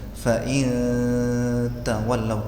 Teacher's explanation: Saat membaca fain tawallau ujung lidahnya jangan nempel ke pangkal gigi. Renggang dulu.